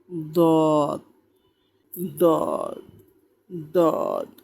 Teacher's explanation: 7 নম্বর মাখরাজ, জিহ্বার গোড়ার কিনারা উপরের মারি দাঁতের গোড়ার সঙ্গে লাগাইয়া